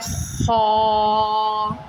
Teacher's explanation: اس کو موٹا کر کے اور گول کر کے پڑھیں گے منہ